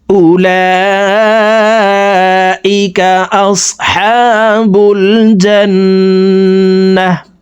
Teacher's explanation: গোলতা ওয়াকফের ক্ষেত্রে হার উচ্চারণ করব এবং হাকে সাকিন করে ফেলব